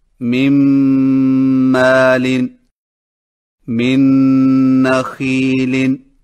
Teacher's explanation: نون اور تنوین کو اگلے حرف میں ملا کر ایک ساتھ مشدد پڑھ کر غنہ کریں، اور یہ کیفیت اس وقت ہوگی جب نون ساکن و تنوین کے بعد حروف یومن کے 4 حروف یا، واو، میم اور نون میں سے کوئی حرف آئے۔ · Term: ادغام تام مع الغنہ